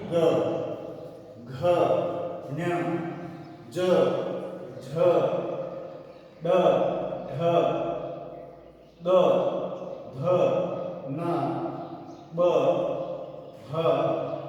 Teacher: इसके बाद में जब हम उच्चारण करते हैं ग, घ, ञ, ज, झ, ड, ढ, द, ध, न, ब, ह, म, यहाँ पर हमारी स्वर तंत्रियां जो हैं वह कंपन करती हैं, तो इनको हमने क्या कहा है, घोष ध्वनि माना है।